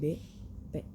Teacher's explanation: huruf b dibaca P Jadi tapi enggak ada hembusan udara